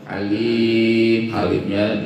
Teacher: halimnya dibaca panjang 2-6 ketuk, itu dihukumkan mad lis sukun